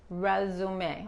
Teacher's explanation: esta S se pronuncia como una Z